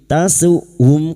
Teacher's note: Karena huruf hamzah memiliki sifat jahr dan siddah. Tertahannya nafas dan suara.